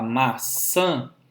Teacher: Maçã tem essa última sílaba como sendo uma sílaba nasal.